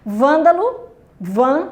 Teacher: a sílaba tônica dessas palavras corresponde a antepenúltima sílaba